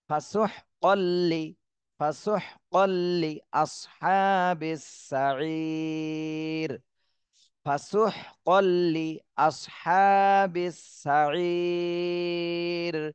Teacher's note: ফাসুহকাল লিআসহাবিস সাঈর, ফাসুহকাল লি, অনেকে কিন্তু এই লিতে টান দিয়ে দেবেন, এখানে কিন্তু খেয়াল করতে হবে, এখানে হরকত, লিতে শুধু এক জের, এখানে কোনো টান দেওয়া যাবে না